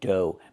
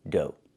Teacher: Make the long O like no and go, and the GH is silent.